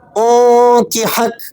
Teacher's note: جب آپ وقف کریں گے کاف کو ساکن کر دیں گے اور ہا کو کاف سے ملائیں گے، انکحک، اس طرح وقف ہوگا۔